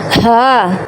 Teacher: اقصی حلق یعنی حلق کا وہ انتہائی حصہ جو سینہ سے ملا ہوا ہے، اس سے دو حروف ادا ہوتے ہیں، حمزہ اور ہا۔ اس ہا کو نکالنے کا ایک آسان طریقہ یہ بھی ہے، مثال کے طور پر جیسے کوئی پریشانی کی حالت میں ہو تو کہتے ہیں ہائے، ایسے ہی یہ ہا اور حمزہ گلے کے اینڈ سے نکالنا ہے، ہا۔